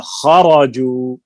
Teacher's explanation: خا حروف مستعلیہ میں سے ہے، پر ہوگا. را کے اوپر زبر ہے، یہ بھی پر ہوگی.